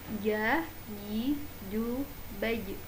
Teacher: Jim seperti teman-teman mengucapkan huruf J dan tidak boleh disertai dengan nafas.